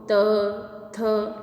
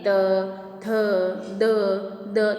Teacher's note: हमारी जिह्वा जो है वो दांतों से टकरा रही है तो त वर्ण का हमारा प्रयोग दांतों से है